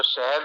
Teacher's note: जैसे अपन सह बोलते हैं, एक सह ऐसा है जो सरस वाला सह है और एक सह है जो शहद वाला सह है। तो वो तालू से बोला जाता है, तो तालव्य है।